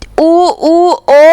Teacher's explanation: हमारे होठ जो हैं एक वृत्त के समान खुलेंगे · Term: वृत्ताकार